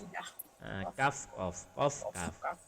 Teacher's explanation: Dekat di lisan pangkal kedua. pangkal lidah setelah qaf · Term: mahraj kaf